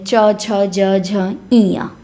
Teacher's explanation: च वर्ण का उच्चारण स्थान। तो च वर्ण का उच्चारण होता है तालव्य से। तालव्य व्यंजन है।